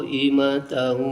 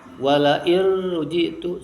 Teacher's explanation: Bedanya yang pertama qaimatahu pakai guna, wala irrujitu idgham juga tapi tanpa guna.